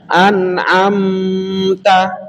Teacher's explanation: mimnya ini bertemu dengan ta, maka membacanya idhar jelas. Jangan ditahan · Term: idhar syafawi